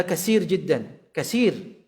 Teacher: logat orang Arab sendiri seperti ini membaca tha dengan sin